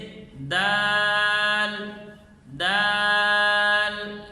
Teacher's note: صحیح اس کی ادائیگی یہ ہے کہ دال کو سختی سے بغیر رکے پڑھیں کہ زبان کی نوک ثنایا علیہ کی جڑ پہ لگے، اور مد کر کے پڑھیں گے، آخر میں لام کو ہلائیں گے نہیں، جیسے دال دال۔